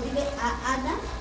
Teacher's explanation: hacen esa separación entre la A y la A, dile a Ana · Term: saltillo